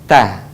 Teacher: melafalkan huruf ta tidak menyentuhkan ujung lidah dengan gigi ataupun dengan langit-langit. Tetapi, huruf ta menyentuhkan ujung lisan kita dengan tempat tumbuhnya gigi atau disebut dengan gusi dua gigi seri bagian atas. · ujung lidah disentuhkan dengan gusi-gusi seri atas